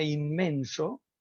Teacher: Cuando exploramos, imaginemos el fonema N es un fonema alveolar nasal sonoro, por ejemplo, en la palabra mano, alveolar nasal sonoro, punto, modo y sonoridad. Cuando exploramos la palabra inmenso, ya no es un fonema alveolar, sino que es un fonema bilabial.